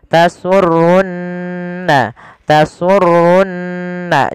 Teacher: ada nun berharokat tasydid, maka ya kita baca dengan bacaan gunnah, ditahan suara nunnya. Tasurrunna, tasurrunna, jangan langsung tasurrun nadhirin, tapi tahan dulu.